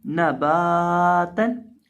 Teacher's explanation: बा को एक अलिफ के बराबर खींच के पढ़ेंगे